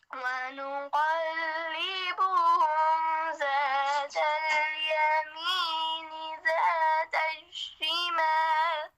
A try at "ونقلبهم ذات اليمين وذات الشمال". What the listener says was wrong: आपसे वाव मिस हो गया, वज़ात الشمال। ونقلبهم ذات اليمين وذات الشمال